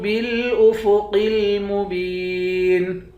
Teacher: قاف کو موٹا پڑھیں گے۔ با کو یا کے ساتھ ملا کر یا کو ایک الف کے مقدار کھینچیں گے، آخر میں نون ساکن ہے۔